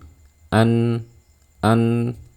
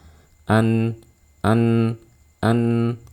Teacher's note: karena dia memiliki sifat bainiah maka alirkan suaranya sedikit